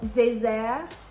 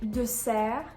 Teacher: you can hear désert has the hard Z sound, and S is in between two vowels. If you take the word dessert, it's the soft S sound, and it's a double S.